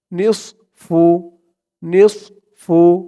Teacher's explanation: ধরবে উচ্চারণটা খেয়াল করবেন নিস একেবারে নিস এমন হবে না কিন্তু নিস বললে এই সদের জায়গায় সিনের উচ্চারণ হয়ে যায় বলতে হবে মুখটা একটু গোল ভরপুর হয়ে যাবে